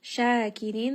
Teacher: Shakirin, this is going to be a two count madd. Ra here is going to be light and then nun has a sukun. So, let's make sure that you give it a little bit of tawassut.